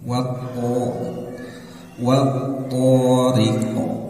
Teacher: ketika mati ataupun dimatikan maka dia harus dipantulkan ya Dan ingat Q ini bagian dari huruf yang tebal ya maka ketika mantul pun dia harus terdengar tebal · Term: huruf Qalqalah